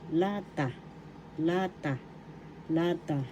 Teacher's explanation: lata lata can in English. First syllable la second syllable ta the accent is in the first syllable